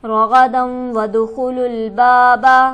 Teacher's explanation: دال پر ہمارے پاس حرف قلقلہ موجود ہے, یہاں آواز اچھلتی ہوئی معلوم ہوگی